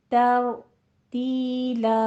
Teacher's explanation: तर रा पुर है, तीला ता बारीक है